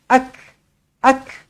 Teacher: huruf Kaf adalah Hamas perlu diberikan percikan angin sedikit